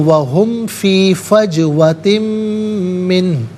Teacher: فجوتن من ہو، فجوتن میں تا کے نیچے دو زیر کی تنوین ہے، سے من کی میم کے ساتھ ملائیں گے، میم کی آواز کو غنّے کے ساتھ ادا کریں گے